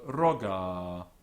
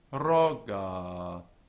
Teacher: the accent is on ro, but the vowel at the end is long with two moras. So roga, but here it's an open syllable.